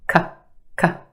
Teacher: Very quick, unemphasized, a schwa sound.